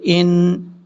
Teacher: حمزہ کو جب نون سے ملائیں گے تو نون کے اوپر شد کی وجہ سے غنہ کیا جائے گا۔ حمزہ نون سے ان، نون زبر نا، ان۔